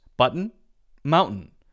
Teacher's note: there's a stop in the voice that's the stop T The Voice goes like that cuts off and then it continues